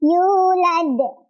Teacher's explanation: Jadi ingat-ingat kalau wawu sukun pasangannya sama dhammah. Sebelumnya harus dhammah, dipanjangkan dua ketukan. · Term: mad tabi'i